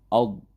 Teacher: Jadi pinggir lidahnya itu ditempelkan dengan gigi geraham atas baik kiri maupun kanan, dan kemudian ketika sukun itu jangan dipantulkan atau jangan dilepas dulu lidahnya supaya tidak berbunyi kolkolah.